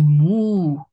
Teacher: le OU dans un contexte grave, avec une consonne grave qui est le M par exemple, et une intonation descendante qui est grave